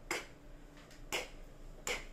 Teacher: Thì khi mà con phát cái âm k của tiếng Việt như thế nào thì con phát âm cái âm k của tiếng Anh như thế, nhưng mà con bật hơi mạnh hơn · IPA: /k/